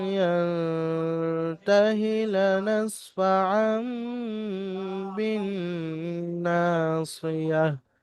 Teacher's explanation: তানবিন ও নুন সাকিনের আওয়াজকে মিমের দ্বারা পরিবর্তন করে পড়তে হবে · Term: ইকলাবের কায়দা